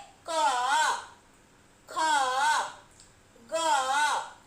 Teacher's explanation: तो जैसा कि नाम से ही स्पष्ट है, कंठस्य व्यंजन यानी कि कंठ से जिस व्यंजन वर्ण को बोला जाए